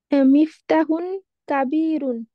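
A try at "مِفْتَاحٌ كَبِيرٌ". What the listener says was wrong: মিফতাহুন বলবেন না, মিফতাহুন। মিফতাহ, এখানে মাদ আছে, এখানে মিফতাহুন, তাহলে কি হবে?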